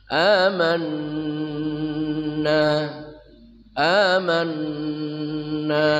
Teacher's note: Nun musyadadah tajibul ghunah